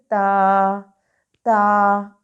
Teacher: ہمارے اوپر والے دو دانت، سامنے کے جو دانت اوپر والے ہیں ان کو کہتے ہیں ثنایا علیہ۔ تا کی ادائیگی کے وقت زبان کی نوک دانتوں کی جڑوں سے ٹکرائے گی، دانتوں کی جڑوں سے ٹکرائے گی، تو ہم ادا کر سکیں گے تا تا، اور تا کو ہم نے نرمی سے ادا کر لینا ہے۔